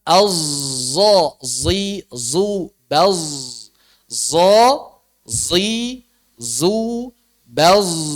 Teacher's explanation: Mencampur tafkhim dan jaharnya jadi satu. Sehingga kita mengucapkan sad yang jahar atau zai yang tafkhim.